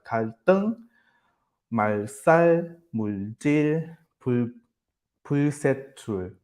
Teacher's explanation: specifically T, S, and J sounds, they become S2 after the letter L. So post-lateral, it means after the L sound. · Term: post-lateral tensification